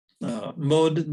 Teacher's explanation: When we have the mode there, that D gets devoiced because we have a voiced obstruent at the end of a word, and it needs to become voiceless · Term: word final devoicing